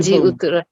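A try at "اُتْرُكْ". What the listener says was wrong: उतरुक, ये साकिन की आवाज बड़ी वाज़ेह हो, पता चले कि आपने साकिन किया है यहाँ पर, उतरुक।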